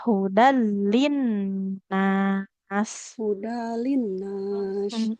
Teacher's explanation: Hudal. Nah, dalnya langsung masuk ke lam. Tanwin bertemu lam idgham bila gunnah.